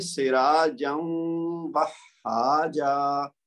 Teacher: یہاں پہ ہے سراجن اور یہاں پہ ہے وہاجا. تو واو کی آواز تنوین کے اندر مکس کریں گے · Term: ادغام